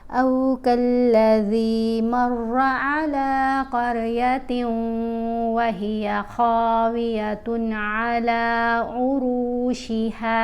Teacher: را کو، قاف کو، خا کو، اور یہاں پر بھی را کو موٹا پڑھنا ہے کیونکہ یہ ان کی آوازیں ہیوی ساؤنڈز ہیں، بھاری آوازیں ہیں، ان کو پر پڑھتے ہیں، ٹھیک ہے۔